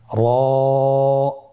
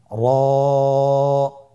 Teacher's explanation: র হরফটি এখানে আমরা পোর করে উচ্চারণ করব, মোটা করে উচ্চারণ করব, এবং র হরফটি এক আলিফ টেনে পড়ব।